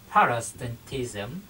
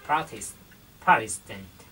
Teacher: khi mà chữ tờ đứng giữa hai nguyên âm thì chúng ta sẽ có thể đọc thành chữ đờ